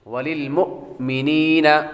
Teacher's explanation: میم کے بعد حمزے کو جھٹکا دے کر پڑھتے ہیں. وللمؤمنین اور میم کے بعد نون کے بعد یا حروف مدہ میں سے ہے.